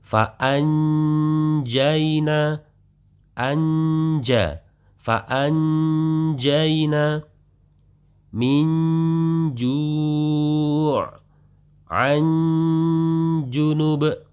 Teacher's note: akan terjadi sensasi suara itu tampak suara en ketika bertemu dengan huruf jim. Berarti di sini adalah pada saat kita mendengungkan suara nun mati tersebut, lidah kita sudah berada pada makhrajnya jim. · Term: ikhfa